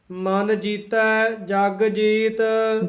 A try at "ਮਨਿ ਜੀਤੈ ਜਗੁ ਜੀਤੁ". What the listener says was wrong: ਜੀਤੈ ਪਦ ਕਸ ਕੇ ਬੋਲਣਾ ਹੈ ਮਨ ਜੀਤੈ ਜਗਜੀਤ ਨਹੀਂ ਕਹਿਣਾ ਹੈ ਜਗ ਜੀਤ ਵੱਖਰਾ ਵੱਖਰਾ ਬੋਲਣਾ ਹੈ